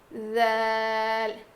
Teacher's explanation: جب ہم ذال ادا کریں گے تو ہماری زبان کی نوک جو ہے وہ سامنے کے دانتوں کے کنارے کو لگے گی اور تھوڑی سی زبان کی نوک باہر نکلے گی